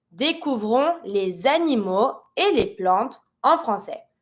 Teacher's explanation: So I'm going to be able to link my S with my A. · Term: liaison